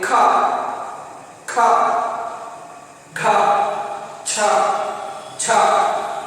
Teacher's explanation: ಮಹಾಪ್ರಾಣ ಅಂದ್ರೆ ಹೆಚ್ಚು ಉಸಿರು ಬೇಕಾಗುತ್ತೆ ಈ 10 ವ್ಯಂಜನಗಳನ್ನು ಉಚ್ಚರಿಸೋದಕ್ಕೆ. ಅವು ಎರಡನೇ ವರ್ಗದ ಎರಡನೇ ಮತ್ತು ನಾಲ್ಕನೇ ಸ್ಥಾನದಲ್ಲಿರ್ತಕ್ಕಂಥ ವ್ಯಂಜನಗಳು.